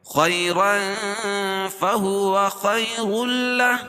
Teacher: ہے را کے اوپر، تو را پور پڑی جائے گی، اور تنوین کے بعد حروف اخفا کی 15 حرفوں میں سے فا ہے، تو یہاں ناک میں بھی آواز کو چھپا کر پڑیں گے